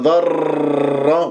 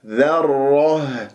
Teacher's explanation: شوف الذال مرققة، الراء مفخمة لأنها مشددة بفتح